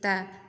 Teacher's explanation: Tapi sedikit diberi hamz ta ya, aliran nafas sedikit ta. Tapi jangan berlebihan juga ta ya.